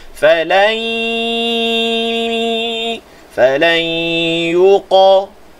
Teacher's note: Pastikan suara keluar daripada mulut dan juga hidung. Serentak. Sama banyak suara atas bawah. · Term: Idgham ma'al ghunnah